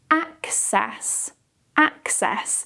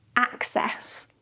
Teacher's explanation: We have this really open and wide A sound.